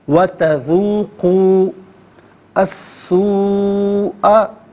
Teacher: وَتَذُوقُوا وَتَذُوقُوا السُّوءَ، ناظرین تذوقو میں قاف پر پیش ہے، اسے السوء کے سین کے ساتھ ملائیں گے، اور درمیان میں سے الف یعنی حمزہ کو حذف کیا جائے گا، اور سین حرف شمسیہ ہے۔ حرف شمسیہ وہ حرف کے جس پر الف لام ہو لیکن لام کو پڑھانا چاہے، تو تذوق السوء غلط ہے، تذوق السوء۔